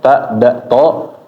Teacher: Ujung lidah ketemu pangkal gigi seri atas ya. Nah, jadi tempat tumbuhnya gigi.